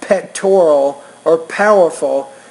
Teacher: if you put a piece of paper in front of your mouth and then you say the P, for example, in the word pectoral or powerful, the actual piece of paper in front of your mouth should move violently. It should flap quickly. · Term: P consonant sound